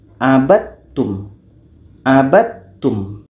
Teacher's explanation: supaya idgham kamil terjadi di sini, maka bunyi da masuk kepada ta.